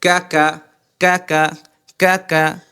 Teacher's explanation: জিবার গোড়া থেকে একটু সামনে একটু সামনে থেকে তার বরাবর উপরের তালুর সাথে লাগবে জিহ্বার গোড়া থেকে একটু সামনে আগাবে সামনে আগায়া তার বরাবর উপরে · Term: কাফ